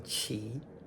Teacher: Third tone chi to beg as in chai beggar